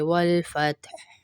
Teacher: ہا کی آواز آئے گی اور تا کو بھی نہیں ہلائیں گے